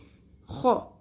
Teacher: خو کو پر کریں گے، خراش بھی سنائی دینی چاہیے